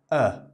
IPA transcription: ə